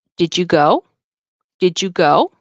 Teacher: saying did you go you can you say did you go very often the D and the Y sound will turn into j j j so you'll hear it did you go did you go and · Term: connected speech